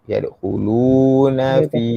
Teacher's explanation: Yadkhulu panjang 2 harakat.